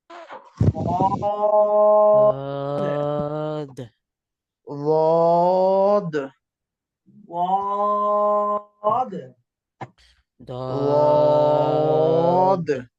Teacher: জিহ্বার কিনারা মানে দদ উচ্চারণের সময় জিহ্বার আগা সামনের উপরে মাড়ির দাঁতে, সামনের উপরের দাঁতের মাড়ির সাথে রাখতেছে। এই দদের উচ্চারণের সময় জিহ্বার আগা সামনের দাঁতের সাথে রাখবে না, বরং জিহ্বার কিনারা মাড়ির দাঁতের গোড়ার সঙ্গে সাইডে লাগবে।